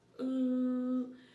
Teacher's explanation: The sound ooh is back rounded. The sound can be found in the middle of put or in the middle of book.